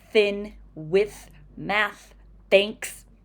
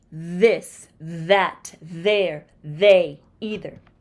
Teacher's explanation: both sounds are made with the tongue between the teeth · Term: th unvoiced